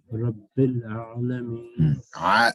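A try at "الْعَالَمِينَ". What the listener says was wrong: So you did the ain right. Allow yourself to now stretch the sound. Alameen.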